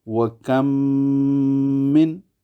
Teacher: مثلا وَكَم من، کم میں میم ساکن ہے اور آگے من آ گیا، اس کا پہلا حرف میم ہے تو دونوں میموں کا ادغام کریں گے، اسے ادغام شفوی مع الغنہ کہتے ہیں